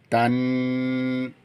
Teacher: আই ওয়ার আই তা নুন জবর তান গুন্না হবে ওয়াজিব গুন্না নুনের উপরে তাসদিদ এজন্য নুন হরফে গুন্না হবে